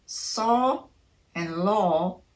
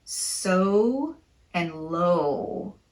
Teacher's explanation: Notice that you're not saying saw and law, but so and low. The lips are tightly rounded at the end of this long O sound.